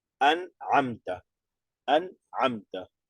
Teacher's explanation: la nun y la mim que tienen sukun no rebotan